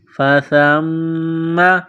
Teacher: سا کو پڑھتے وقت زبان تھوڑی سی باہر نکالیں گے